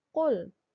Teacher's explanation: Berarti qul, dianya ada di tenggorokan